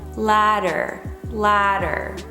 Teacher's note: We're going for a soft D, for a less voiced D.